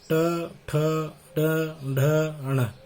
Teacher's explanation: मूर्धन्य वर्ण कहलाते हैं क्योंकि इनका उच्चारण स्थान मूर्धा होता है